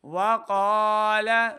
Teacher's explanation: لام زبر لا، لام کی آواز کو لمبا نہیں کریں گے. وقال نوح الرب حرب، ہا کو تلفظ کے ساتھ پڑھیں گے.